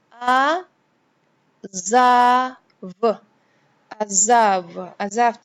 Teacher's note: The ayin is silent, it cannot be pronounced, but the vowel under it is pronounced. So it's a, za, v.